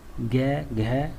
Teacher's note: घोष या सघोष व्यंजन जिनके उच्चारण में स्वर तंत्रियों में कंपन होता है, जैसे स्पर्श व्यंजन का तीसरा, चौथा, पांचवा, जैसे ग, घ और अंग वर्ण, तथा मैं, य, र, ल, व, है, ड, ढ, ज तथा सभी स्वर, मतलब सभी स्वर भी सघोष व्यंजन के अंतर्गत ही आते हैं।